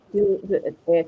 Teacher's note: It is short, short and relaxed. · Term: E, the short one